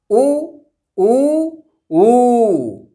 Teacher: उ कालो अच ह्रस्व दीर्घ प्लुतः, अर्थात उ कालो, उ कालो का मतलब उ उ ऊ। अब यहाँ पर क्रमशः उ ह्रस्व हो गया, उ दीर्घ हो गया, उ प्लुत हो गया।